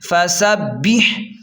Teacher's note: سین سیٹی کو واضح کریں اور سین کو با کے ساتھ سختی سے ملائیں کیونکہ با پر تشدید ہے. فسبح، ہا کو حلق سے صاف نکالیں